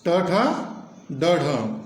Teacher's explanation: ट ठ ड ढ ये मूर्धन्य ध्वनियां है